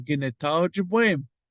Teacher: if you notice this short vowel, the O fell off the back.